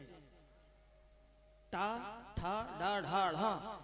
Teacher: टा, ठा, डा, ढा, ढा, ये इनको बोलते हैं मूर्धन्य, क्योंकि इनका उच्चारण के समय जीभ मूर्धन्य से छिपती है, ऊपर टच होगी।